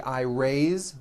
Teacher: even though it is spelled with an s it's pronounced with a voiced z raise so we say i raise with a voiced z ending